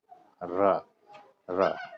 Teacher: दांत के जाके जड़ पर टच कर रहा है जीव